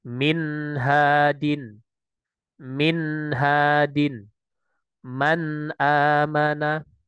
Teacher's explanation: Maksudnya izhar di sini adalah kita memberikan lafadz yang jelas pada nun sukunnya. Nah, min min nah itu harus mengalir tawasudnya. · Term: gunatul naqisah